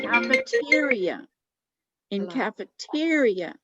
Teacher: emphasize the middle of the word librarian in cafeteria in cafeteria it's the te that is louder and stands out more